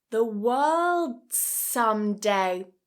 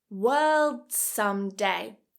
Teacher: Instead of releasing that as a /d/, I'm connecting it together.